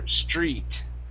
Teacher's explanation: Your tr is pronounced like a chr. Okay. Tr equals chr.